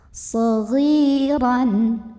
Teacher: huruf ghain yang baris kasrah kita panjangkan 2 harokat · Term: mad tabi'i